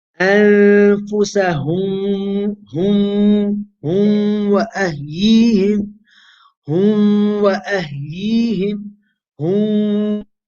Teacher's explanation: Meem and Waw are pronounced from the same place. They have the same makhraj, both lips. There's a chance that you might merge, do Idgham of the Meem into the Waw. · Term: merging the Meem into the Waw